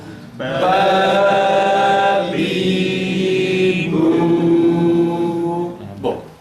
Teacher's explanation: alt üst dudak ikisi beraber yum sadece alt dudağı üst dudağı yum [Müzik] kapat yum biraz da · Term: B harfi